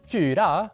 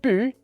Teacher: in Swedish or Norwegian, you have the long U's and the long Y's